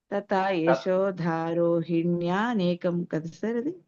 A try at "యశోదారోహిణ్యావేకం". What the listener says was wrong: నే కాదమ్మా, వేకం. రోహిణ్యౌ ఏకం విడతీస్తేనమ్మా. ఏకం అది కలిపితే వే.